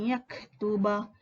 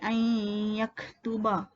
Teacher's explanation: Kita masukkan pada ya, dengung pada huruf ya ni. Yaktuba. Okay, dengung 2 harakat lah kat situ.